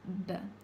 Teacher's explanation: the B is a bilabial plosive, where we're using the lips to make the sound with a complete block of air, therefore you can't hold it, B.